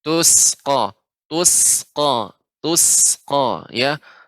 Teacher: Sin hurufnya rokhawah, mengalir udaranya, tidak tertahan. Tusqa, tus.